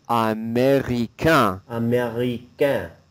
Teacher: So the A-I-N sound, you don't pronounce the N at all.